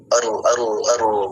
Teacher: ujung lidah bergetar cuman satu hurufnya yakni huruf ro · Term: takrir